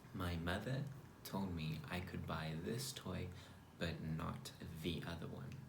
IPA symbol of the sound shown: ð